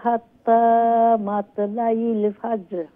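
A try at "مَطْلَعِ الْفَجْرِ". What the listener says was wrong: মাতলাইল আইন, আইন মেরুল থ্রোট থেকে যাতে হামজা লাম উচ্চারণ না, হিয়া হাত্তা।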